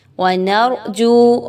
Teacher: را پر جزم کا نشان ہے، نون پر زبر ہے، اس را کو بھی آپ نے پر پڑھنا ہے